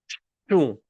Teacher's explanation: It's actually almost impossible to say because a lot of the air is going through my nose.